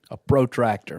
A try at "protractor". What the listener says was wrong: It's not a protractor. It's a protractor. Too much emphasis. Protractor. How do you say protractor?